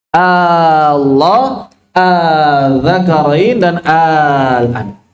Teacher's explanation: Berubah menjadi mad. Maka hamzah pertama yang asalnya pendek berubah menjadi panjang. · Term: ibdal